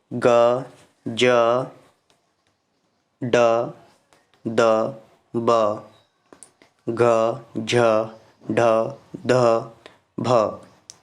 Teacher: ये सभी को बोलते समय एक कंपन सी होती है दोस्तों आपके कंठ में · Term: घोष व्यंजन